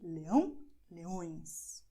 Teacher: in Portuguese you go and, well, you will make it really nasal